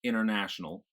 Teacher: if I had a T in between an N and a vowel sound, like international, that becomes sort of swallowed